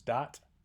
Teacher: the pattern is usually to get th stopping before vowels so that becomes dat